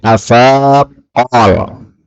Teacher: qaf ketemu qaf, ini boleh idgham